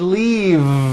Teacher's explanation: is that correct no it's not leaf with an unvoiced F I should have said leave with a voiced V sound